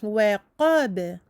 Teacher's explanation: Waqab, aminci, qa, emphatique, b, waqab. Le b est aminci mais porte une qalqala car il fait partie des 5 lettres de la qalqala quand elles sont sakinat.